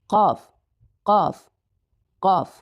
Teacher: So the highest point again, or where the sound is coming from, should be from the far tongue, but the space or the area between your palate and your tongue is going to be larger than letter Kaf.